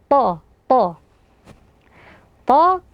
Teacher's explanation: dia memiliki sifat istiala yaitu terangkat pangkal lidahnya juga tertutup awal Tengah lidahnya maka akan dibaca tebal · Ha ini adalah huruf yang keluar dari tengah tenggorokan. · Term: huruf th, sifat isti'la, huruf ha, huruf to